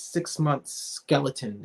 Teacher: it's a sibilance of the s sound and the harshness of the x and the k